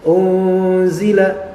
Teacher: nunnya diikhfakan disembunyikan namun juga masih ada bekasnya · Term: ikhfa Hakiki